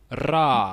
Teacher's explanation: that's a trilled r uh we don't do that in English it's actually more like a D sound that's being trilled not not not an R um but you know whether you